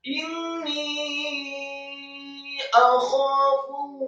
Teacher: alif fathah 1 harokat, kemudian kha-nya dibaca tafkhim, serat fathah 2 harokat karena setelahnya ada alif.